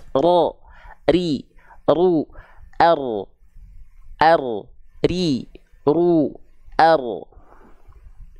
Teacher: melafalkan huruf r kalau R kita anggap dia menuntut banyak getaran kalau huruf ra itu dia getarannya hanya sedikit tapi tetap tegas lugas jelas